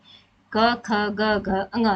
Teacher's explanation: कंठस्थ व्यंजन इनको बोलते हैं जिनका उच्चारण गले से होता है